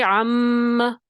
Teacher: آواز جائے گی اور تھوڑی دیر ٹھہرے گی، ایک الف کی مقدار کے برابر آواز ٹھہرے گی. یہ اس غنے کی بات ہو رہی ہے جو ایک الف کے برابر مقدار ٹھہرے گی. · آواز کو ناک میں لے کے گئے، خیشوم میں لے کے گئے. ٹھیک ہے، عم آواز جائے گی اور تھوڑی دیر ٹھہرے گی، ایک الف کی مقدار کے برابر آواز ٹھہرے گی. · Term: غنہ, میم مشدد